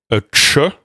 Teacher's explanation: Vous faites à la fois un te et un che, mais en même temps. Et donc, ça s'appelle une consonne affriquée.